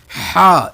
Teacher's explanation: تو ہا، کوشش کرنا آپ انگلی رکھ کے پڑھ کے دیکھنا ہے، ہا حلق کے درمیان میں، ہا، اس کی آواز حلق درمیانی ہے، اور درمیانی حلق سے ادا کریں گے